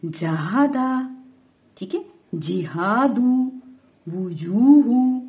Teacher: جب ہم جیم ادا کر رہے ہیں تو ہماری زبان جو ہے پوری تالو سے لگ رہی ہے، پھر یہ ادا ہو رہا ہے.